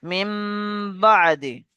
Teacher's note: নুন সাকিনের পরে বা এসছে, তাই নুন সাকিনকে মিমের দ্বারা পরিবর্তন করে একালি পরিমাণ গুণনা সহ পড়তে হবে।